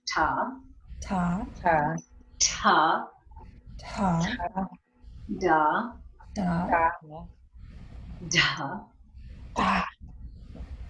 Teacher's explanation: So you can feel the placement of your tongue is like right up on the roof of the mouth behind your teeth. That's where we are normally saying these, whereas the row before, the tongue was curling up into that upper palate there.